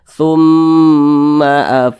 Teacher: baca damah nih berarti mim bertasydidnya ini hukumnya adalah ghunah musyaddadah maka cara bacanya itu dighunahkan atau didengungkan jadi suaranya itu kita tahan kita panjangkan sejenak